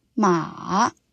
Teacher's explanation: Third tone, ma. The tone starts mid, dips down, then rises.